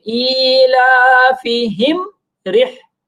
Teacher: मीम को जाहिर करके फिर आगे चलेंगे